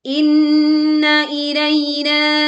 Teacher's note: nun bertasydid, kita baca dengung yang sempurna, tidak tergesa-gesa